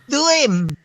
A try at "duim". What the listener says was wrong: Dime. dibacanya ya betul, tapi dibacanya dime bukan duim. Dime.